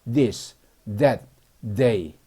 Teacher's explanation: th는 혀를 물고 드 발음